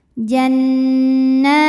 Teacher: cukup dibaca panjang dua harakat saja